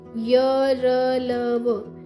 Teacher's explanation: अंतस्थ व्यंजन वे व्यंजन होते हैं जिनका उच्चारण करते समय हमारी जीभ, तालु, दांत और होठों के बीच पूरी तरह स्पर्श नहीं होता। ये व्यंजन अर्धस्वर भी कहे जाते हैं।